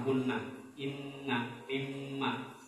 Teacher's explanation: hunna dalam nun tasydid atau mim bertasydid ini lebih kuat daripada hunnahnya dalam idgham bi hunna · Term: huruf gunna musyaddad